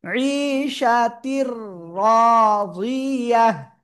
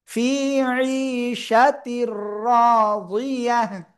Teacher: তানবিনের পরে ঈদগামে বেলা গুন্নার অক্ষর র, লাম, এই দুইটার একটা অক্ষর র আসছে, এই জন্য আমরা গুন্না ছাড়া মিলাইয়া পড়বো।